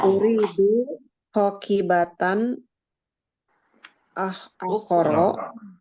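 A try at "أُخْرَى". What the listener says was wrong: Ukhra, betul Bu, kayak gitu aja. Nggak harus panjang. Uridu hakibatan ukhra, udah cukup, itu udah betul.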